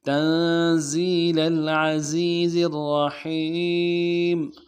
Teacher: را کو موٹا کرنا چاہیے، ہا کو گہرائی سے ادا کرنا چاہیے